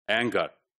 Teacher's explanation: So the consonant before g, anger, that's the engma sound.